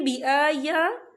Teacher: बिआया खड़ी हरकत है, तो हम इसे 2 या 3 हरकत के बराबर खींच के पढ़ेंगे।